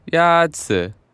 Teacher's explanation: Yazi is pronounced with a first tone.